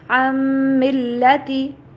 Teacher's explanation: نون کی آواز نہیں آئے گی ڈائریکٹلی، میم کی آواز